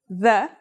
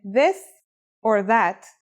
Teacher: This letter's pronunciation is a voiced sound, the, as in this or that. It's pronounced with the tongue between the upper and the lower teeth.